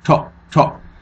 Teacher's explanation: it's just pronounced quickly and with a slight drop to it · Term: short vowel sound